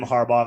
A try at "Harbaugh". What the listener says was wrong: I love that you pronounce that with a hard G at the end.